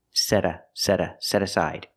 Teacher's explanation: you hear the T change to a fast D